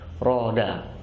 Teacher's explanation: ro ketika fathah pakai punggung dari ujung lidah